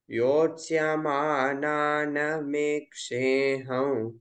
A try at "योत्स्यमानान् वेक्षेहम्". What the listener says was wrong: नॉट मेक्षेया, योत्स्यमानान्